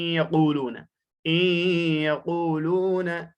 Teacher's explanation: نون ساکن کی یہاں آواز باقی رہتے، گنہ کے ساتھ ہم نے اسے پڑھا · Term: ادغام